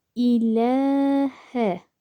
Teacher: buradaki leyi bir elif miktarı uzatıyorum ilehe derken lde bir elif miktarı uzatma var illallahu yine burada